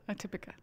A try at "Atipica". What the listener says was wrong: Atipica. Atipica. Not atypical, but Atipica.